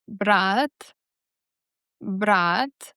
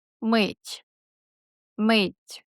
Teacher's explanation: The middle of your tongue rises, and the release of air is the way more gentle. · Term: soft T